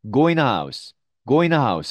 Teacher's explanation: 사실 n 발음이 두 번 나기 때문에 네, 뒤에 n 발음은 사실 없어진다 생각하시면 됩니다.